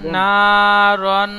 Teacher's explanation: নুনটি আলিফ মাদ্দা এক আলিফ টান দেবেন, রন এক আলিফ গুন্না করবেন